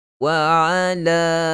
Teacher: 4 harakat. Huruf alif bertemu dengan hamzah. Dalam 2 kalimah kita sebut sebagai mad jaiz munfasil.